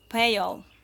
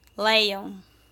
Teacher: In other words, when a word ends in vowel and the next one begins with a vowel sound, we add an extra sound to make the pronunciation easier. In this case, we insert a Y sound at the beginning of the next word. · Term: Vowel to vowel linking